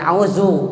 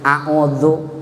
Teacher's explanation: Kalau yang ada titiknya, membacanya atau mahrojnya ujung lidah digigit sedikit. A'udzu, ujung lidahnya di ujung gigi.